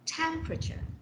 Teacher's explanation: the first syllable takes the stress